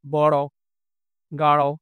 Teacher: জিভের সামনের অংশ উল্টে গিয়ে উপরের পাটি দাঁতের মূলে একটি টোকা দেয় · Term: টোকাজাত ধ্বনি